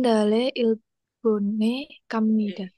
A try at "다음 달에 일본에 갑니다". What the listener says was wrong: Bukan daem dale gitu, nggak enak banget bacanya. Dijadiin satu. Daem dare, daem dare, daem dare. Jadi bukan daem kayak gitu, bukan. Jadi satu, tarik. Daem, dare gitu. Daem, dare.